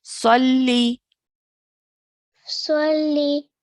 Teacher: We have to really press down on the lam mushaddad.